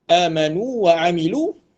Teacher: Kita akan baca secara jelas huruf waw mat dan waw baris atas tu tak ada idgham.